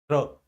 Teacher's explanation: रा को उच्चारित करने में क्या होगा, जिह्वा मसूड़ों को छुएगी। र, महसूस कंपन तो होगा लेकिन मसूड़ों को छूने की चेष्टा करेगी, र, है ना।